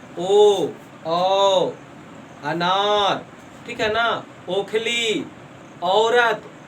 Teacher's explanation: अगर आप लोग ऐसा सोच रहे हैं कि ओ और औ बोलेंगे तो हमारा ओठ सटेगा, सटता नहीं है, लेकिन हाँ ऊपर नीचे होता है। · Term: कंठ ओष्ठ वर्ण